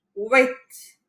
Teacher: Hope you remember H is silent, so it is pronounced huit.